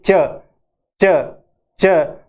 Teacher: तो जब हम इसको च को बोलते हैं तो एफ्रिकेट यानी आवाज जो है वो थोड़ी सी रुकती हुई बाहर निकलती है